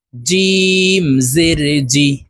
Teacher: জিম হরফ জিহ্বার মধ্যখান থেকে উচ্চারণ হবে, কারণ জিমের মাখরাজ জিহ্বার মধ্যখান থেকে হবে।